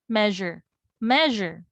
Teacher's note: So the stress is on the first syllable in measure.